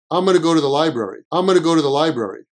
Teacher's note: the N at the end of the going just comes out like hmm